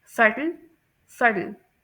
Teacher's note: यूएस में जो टी की साउंड है वो सॉफ्ट डी की साउंड के तौर पर प्रोनाउंस की जाती है।